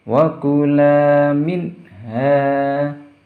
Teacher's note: ada huruf nun sukun lagi berteman huruf H jadi cara membacanya harus jelas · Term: bacaan izhar